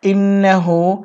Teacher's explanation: নুনে তাসদীদ হয়েছে এই গুণটির নাম হচ্ছে ওয়াজিব গুণনা গুণনা করতে হবে